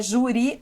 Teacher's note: esta palavra é uma paroxítona porque ela tem a tonicidade na penúltima sílaba